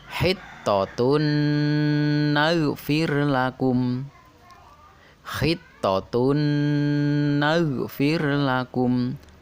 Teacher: dibaca dengung dua harokat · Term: Idgham Bighunnah